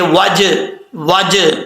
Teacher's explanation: جیم کے اوپر قلقلہ ہے، قلقلہ کے ساتھ پڑھیں گے